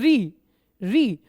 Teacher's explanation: तो हमारी जीभ सीधी मूर्धा पे जाके टच होती है बच्चों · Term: ऋ